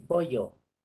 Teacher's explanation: la doble L, la gente lo pronuncia como Y. En vez de pollo, dicen pollo.